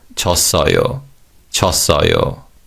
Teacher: Now, in terms of pronunciation, the W glide vowel 워 is weakened and sounds like 어